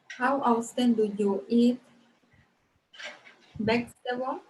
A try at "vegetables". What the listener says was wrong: Okay, vegetable or vegetables? Remember, we have to pronounce the S like vegetables. Exagera un poquito en la S. Para que no siga así como nosotros, como los costeños, así mochito, mocho. Vegetables.